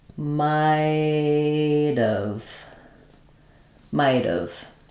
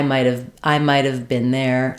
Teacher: basically we lose the ha and uh we contract it